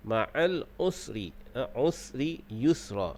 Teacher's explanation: Huruf sin bersifat dengan sofi, yakni berdesir.